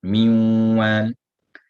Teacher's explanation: this would be idgham naqis, a deficient or incomplete idgham, because a sifa remains. The ghunna remains.